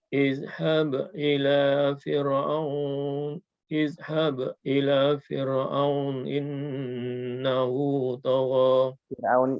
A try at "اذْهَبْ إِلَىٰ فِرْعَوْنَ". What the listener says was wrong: Fir'aunnya dikasih harokat. Fir'auna izhab ila fir'auna innahu طغى